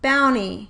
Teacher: you would delete one phoneme (most likely /r/ because it’s a more difficult sound) from the onset of the first syllable and the word would be pronounced “bownie.” Notice how the word now fits the CVCV syllable pattern. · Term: cluster reduction